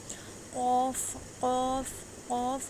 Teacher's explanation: قوف کوے کے پاس سے ادا ہوگا۔ قوف واو زبر قو، قوف یا زبر قوئی۔